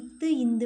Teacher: நாக்கோட நுனி மேல்வாய் பல்லோட அடியை பொருந்துறதுனால பிறக்கிறது